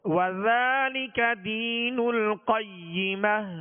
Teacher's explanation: کھڑا زبر ہے جو الف مدہ کے قائم مقام ہے لہذا اس کو ایک الف کی مقدار میں کھینچ کر ادا کریں گے